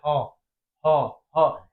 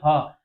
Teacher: स्वर का मतलब होता है स्वर का मतलब होता है कंठ के भीतर से। भीतर से ह का उच्चारण स्थान जो होगा स्वर के कंठ के भीतर से होगा